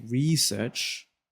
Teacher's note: If you put stress on the re and say research, that's a verb. Whereas if I say research and I put the emphasis on search, that's a noun.